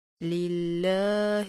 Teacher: لفظ اللہ کے لام کی باریک ادائیگی کیجیے